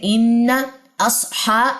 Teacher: ٹھیک ہے، تو یہاں پہ آپ غننے کے لیے نیچے سے اس کو مارک کر لیں. ان اصحا، ہا کھڑا زبر ہے 2 کاؤنٹس لمبا کریں